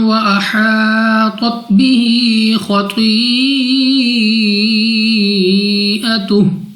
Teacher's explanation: الف سے پہلے زبر الف مدہ 2 سیکنڈ تک لمبا کرنا ہے۔ طوا مستعلیہ میں سے ہے، موٹا پڑھیں گے، منہ اور آواز کو کھول کر۔ خا ہمارے پاس مستعلیہ میں سے ہے، طوا بھی مستعلیہ میں سے ہے، تو دونوں کو 2 سیکنڈ تک لمبا کر کے پڑھا جائے گا۔